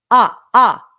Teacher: we're going to use a glottal attack